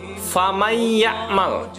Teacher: nun matinya tidak lagi dibaca, melainkan langsung masuk ke huruf idghamnya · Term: idgham bi gunnah